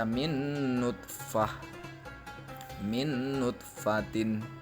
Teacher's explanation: nun mati bertemu dengan nun yang berharokatkan domah, sehingga dibaca min nutfatin